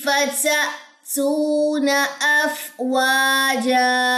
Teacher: حمزہ کے اوپر چونکہ یہاں پہ جزم ہے تو آپ نے یہاں پہ کیا کرنا ہے؟ جھٹکا دینا ہے